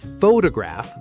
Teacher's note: Photograph, the noun, stress on the first syllable